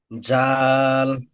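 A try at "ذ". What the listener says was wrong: জাল বলবেন না, জাল হলো এটাই, তাও জাল এটা নয়। জাল, দেখেছেন? ওটা জাল নয়, এই দেখেন। জা। জা।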